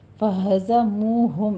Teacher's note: زائے کی آواز سیٹی کی نکالنی ہے